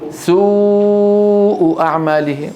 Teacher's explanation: تخرج باهتزاز الاوتار الصوتيه في الحنجره هاي الواو ويصاحب ذلك انضمام للشفتين مع ارتفاع اقصى اللسان شوفوا ارتفاع اقصى اللسان في الواو شايفين هذا الارتفاع هذا يحدث